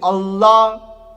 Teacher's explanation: you twist your tongue when you say the la. So it's not with the tip of your tongue, you twist it and say more behind your teeth and you say la.